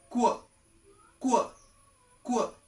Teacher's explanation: It's a combination of K and W. K and W. Two sounds to make the sound of this letter.